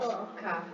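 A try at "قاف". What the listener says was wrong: Sort of like this one makes you smile a little bit. Calf. and qaf makes you do the fish. Qaf. Qaf.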